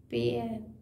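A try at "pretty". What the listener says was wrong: प्री पेयर नहीं है प्री या प्रे प्रिटी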